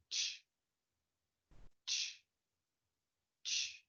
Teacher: Ch, ch, ch. There is no vibration, and that's because ch is a voiceless sound.